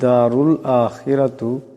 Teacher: রার উপর পেশ আছে, আওয়াজটাকে মোটা করিয়া পড়তে হবে।